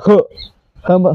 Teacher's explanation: ह साठी तोंडातून हवा सोडली जाते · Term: महाप्राण व्यंजन